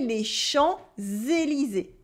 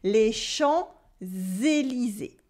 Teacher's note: the S that is supposed to be silent in les champs, without anything after, becomes a Z sound because we have Élysée after with un E in French. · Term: la liaison